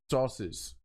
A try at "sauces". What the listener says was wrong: You had a real long S. Like